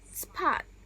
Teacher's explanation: The word spot. The lips press together and then release into the A as in father vowel.